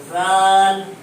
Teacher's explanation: زبان کی نوک ثنایا علیہ کنارے سے لگتی ہے